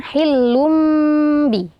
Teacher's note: ya kemudian setelahnya ada huruf ba di sini hukumnya adalah iqlab tanwin bertemu dengan ba dibaca dengung panjang